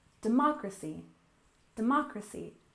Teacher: stress the second syllable democracy